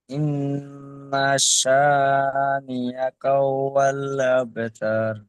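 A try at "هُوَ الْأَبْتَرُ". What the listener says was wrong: এখানে আপনার পড়াটি এমন হচ্ছে যে যেন হু আল হয়ে যাচ্ছে, এখানে হু আল যেন হয়ে যাচ্ছে, হু আল হবে না, হু ওয়াল, হু ওয়াল। আব, এটি কলকলা হরফ। জি বা কলকলা হরফ আমরা 10 নম্বর সবকে পড়েছি, 10 নম্বর সবকে পড়েছি হামজা বা জাবার আব, তাই না ভাইজান? শানিআকা হুয়াল আবতার, আবতার। হু আল নয়, হু ওয়াল, হু ওয়াল।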